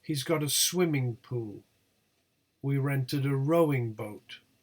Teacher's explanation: the tonic syllables here are swim and row, and not pool and boat. If you use a word in an utterance and repeat it in the following utterance, it does not carry the tonic stress.